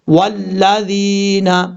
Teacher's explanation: یہاں دال کے بعد جا مدہ ہے، یا مدہ کے بارے میں آپ کو بتا دوں، حروف مدہ تین ہے، الف واو یا، الف سے پہلے زبر ہو تو الف مدہ، اور واو ساکن سے پہلے پیش تو واو مدہ، یا ساکن سے پہلے زیر ہو تو یا مدہ ہوگا۔ یہاں پر یا ساکن سے پہلے زیر ہے اس لیے یا مدہ ہوگا، ایک الف کی مقدار اس کو لمبا کر کے پڑھا جائے گا